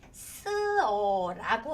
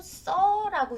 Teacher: 쓰다에 아나 어를 붙이면 우리 쓰어라고 하지 않고 써라고 되죠? 의가 탈락이 되는 거예요. 밥을 푸다도 마찬가지예요. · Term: 모음 탈락